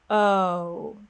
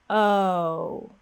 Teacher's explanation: the lips start off relaxed and they gradually glide forward. O. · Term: American O sound